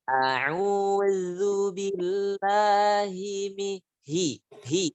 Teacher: Lihat, zalnya di ujung lidah tipis.